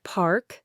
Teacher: the word park similarly features a clear audible R sound that resonates even before the K. You can almost feel the R on your tongue. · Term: rodic